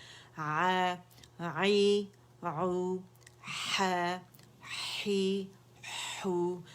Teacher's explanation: ये भी हमज़ा हा एक जगह से अदा होते हैं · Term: फार थ्रोट